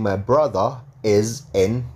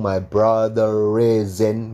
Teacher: Britishnya, my brother. R-nya ketemu is ya. Berarti dibaca. Kalau mau disambung dibaca.